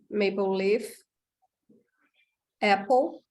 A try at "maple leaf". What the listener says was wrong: Leaf is a long vowel, E, leaf. Yeah, not lift, yeah, not like lift.